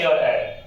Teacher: ए और ऐ का उच्चारण स्थान कंठ तालु होता है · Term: कंठ तालव्य